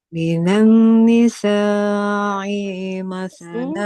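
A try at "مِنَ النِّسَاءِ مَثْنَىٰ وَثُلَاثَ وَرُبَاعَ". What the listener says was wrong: Hamzanya nggak panjang. Huruf Hamzah berharokat kasro. Huruf berharokat kasro itu boleh dibaca panjang apabila ada huruf ya di depan. Minan nisa masna wa thulatha wa ruba'.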